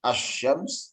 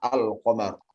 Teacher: pada saat kita membaca asyams langsung masuk kepada shin, pada saat kita membaca al-qamar kita baca alif lam terlebih dahulu. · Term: alif lam syamsiah